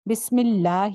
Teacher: لفظ جلالہ کو پر نہیں کرنا, باریک رکھنا ہے, کیونکہ اس سے پہلے زیر تھی